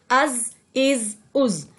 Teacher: بالکل تیزی کے ساتھ، یعنی کہ ایک سیٹی کی آواز کے ساتھ، جیسے ہم سین کو پڑھتے ہیں اسی طرح ہم زا کو بھی پڑھیں گے، از از از۔